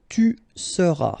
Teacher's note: tu seras, final S not pronounced